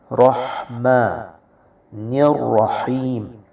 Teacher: حروف حلقی میں سے ہا ہے اور یہ وسط حلق سے نکلے گا